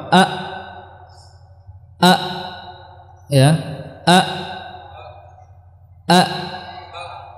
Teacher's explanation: ketika Hamzah maka dua pita suara dia merapat A A Ya A a ya tidak bisa kita ee panjangkan